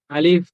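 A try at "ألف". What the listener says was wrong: হ্যাঁ, এবার কিছুটা হয়েছে, আবার বলেন।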